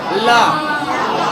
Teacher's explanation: हवा निकलता है तो जीभ के बगल से · ला बोलते समय हमारा जीभ दांत में जाके सट जाता है और अंदर से निकलने वाली हवा जीभ के किनारे से पास होता है। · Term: पार्श्विक वर्ण